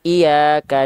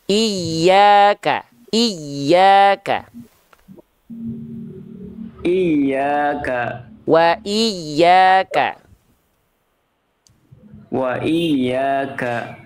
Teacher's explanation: Oke huruf y ditasdidkan dulu ditekan dulu